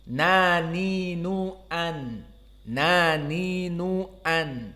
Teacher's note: Dan nun di sini dalam keadaan sifatnya jahr. Maka dia sama seperti yang tadi jahr, ya dan ain.